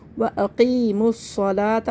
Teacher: اور صاد کو موٹا کر کے پڑھیں گے اور قاف کو بھی موٹا کر کے پڑھیں گے۔ واقیموا واو کو چھوڑ دیں گے، یہ دو حمزۃ الوصل ہے، ان کو چھوڑ دیں گے، لام کو بھی چھوڑ دیں گے، نیم کو فوراً تشدید سے ملا دیں گے۔